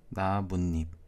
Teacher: 그리고 나무 잎에서는 나뭇잎, 니은이 추가가 됐네요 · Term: 니은 첨가